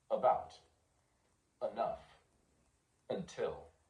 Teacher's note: it's not pronounced schah it's pronounced uh as in about enough until · Schwa is the main sound of unstressed vowels, like the A in about, the E in enough, the U in until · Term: schah sound, schwa sound